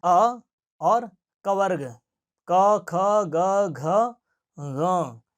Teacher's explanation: तो इन वर्णों का उच्चारण स्थान है कंठ अर्थात अ और कवर्ग क ख ग घ ङ